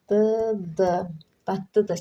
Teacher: Bu sondakı r tələffüz olunmayacaq. Dadlıdır şəklində tələffüz olunacaq.